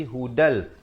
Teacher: Jangan baca hudan, tapi hudal. Masuk terus tanpa dengung.